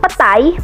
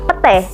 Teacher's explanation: perubahan bunyi bahasa yang berwujud diftong menjadi monoftong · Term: monoftongisasi